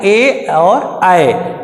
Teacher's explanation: कंठ और तालु इकट्ठा लगा के बोला जाता है ए और आए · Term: कंठ तालु